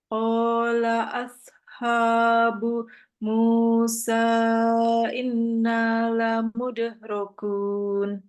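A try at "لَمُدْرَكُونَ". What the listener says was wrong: Iya, jangan diputus. Lamudrakun.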